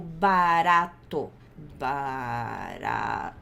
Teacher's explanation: É o som de R na frente da boca, porque a gente tem som de R na frente, no meio e no fundo da boca. Em inglês é o som de R na frente da boca, que é igual ao português, com som de R do português. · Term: flap